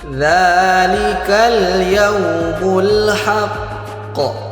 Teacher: Kemudian huruf qo juga mempunyai sifat qalqalah. Jadi harus kita pantulkan huruf q-nya kita tahan kemudian kita pantulkan. · huruf qa itu mempunyai sifat yang namanya syiddah. Syiddah itu maknanya tertahan. Kemudian huruf qa juga mempunyai sifat qalqalah.